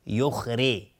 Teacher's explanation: خا از حروف استعلاء غلیظ تلفظ میشه. یخری را اینجا حکمش استفاله ترقیق است نازک تلفظ میشه چون کسره داره